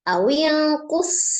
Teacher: ada huruf shad sukun, diasofirkan